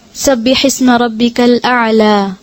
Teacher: پھر بغیر حرکت کے یا, ٹھیک ہے, کبھی یا آپ نے نوٹ کیا کہ کبھی خالی ہوتی, اس پہ کچھ نہیں ہوتا, سکون بھی نہیں ہوتی. تو بغیر حرکت کے یا سے پہلے زبر ہو, وقف میں کھڑی زبر کے برابر لمبا کر کے پڑھیں گے.